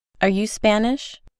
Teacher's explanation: Observe que ahora la oración no tiene el acento al principio, sino al final.